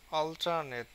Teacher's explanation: যেমন আমরা দেখি অল্টারনেট, অল এর উপরে বেশি স্ট্রেস, আর নেটের উপরে কিন্তু কম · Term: সেকেন্ডারি স্ট্রেস